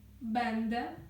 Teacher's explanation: е носове в кінці читається як звичайна літера е тобто носовий призвук втрачається